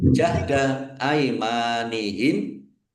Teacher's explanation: mim fathah alif mad thbi'i panjang dua harakat · mim sukun bertemu dengan huruf lam bacaan izhar Syafawi dibaca jelas.